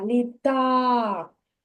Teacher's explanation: так на А так Лі так на а на другий склад я поставлю наголос на другий склад на звук а